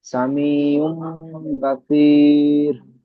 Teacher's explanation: ইয়া সাকিনের ডান দিকে জের এসছে, ইয়া মাদ্দাকে একালিফ পরিমাণ টান দিয়ে পড়তে হয়।